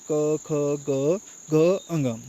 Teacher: क वर्ग का उच्चारण स्थान जो है वो कंठ से होता है